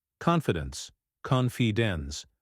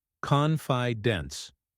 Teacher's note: make sure to stress the first syllable